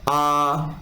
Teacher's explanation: मुख द्वार आपका पूरा खुल रहा है, मुंह आपका पूरा खुल रहा है, ठीक है, आ, तो आपका विवृत हो गया, ठीक है।